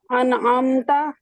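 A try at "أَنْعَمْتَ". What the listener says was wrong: انعامت. عین آپ کا ٹھیک نہیں ہے، عین پہ تھوڑا زور دیں. انعامت.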